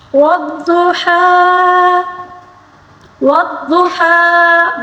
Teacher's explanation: والضحیٰ، والضحیٰ، واد کو پر پڑھیں گے، ہا کو حلق کے درمیانی حصے سے ادا کریں گے، اور کھڑا زبر کو اسی طرح ہی پڑھیں گے، اس میں کوئی تبدیلی نہیں آئے گی، ٹھیک ہے۔